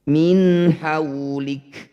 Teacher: Kaf sukun ini punya sifat hamas. Harus memercik udara dari lisan.